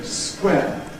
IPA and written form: skweː (square)